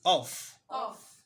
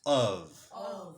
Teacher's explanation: Please take note that this F is realized as what? V.